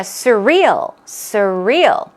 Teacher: stress goes on the real second syllable